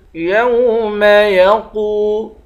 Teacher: قاف کو واو سے ملا کر واو کو ایک الف کی مقدار کھینچیں گے، قاف کو موٹا پڑھیں گے